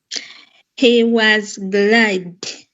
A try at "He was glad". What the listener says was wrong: Where is the I coming from then? Yeah, don't rush. Look at that word. Observe it well. Find out which sounds are you seeing. Don't see letters, but see sounds. Sounds.